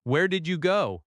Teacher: Notice how your voice lifts slightly. That rising intonation signals a question in American English.